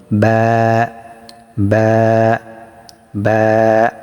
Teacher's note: বাটা হবে ঠোঁটের ভিজা অংশ থেকে, অর্থাৎ আপনারা ঠোঁটটা স্বাভাবিকভাবে রেখে দিবেন, বন্ধ করে আবার ছেড়ে দিবেন, আওয়াজ করবেন · দুই ঠোঁট হতে ওয়াও বা মিম উচ্চারিত হয়, তবে বা ঠোঁটের ভিজা অংশ হতে উচ্চারিত হয়।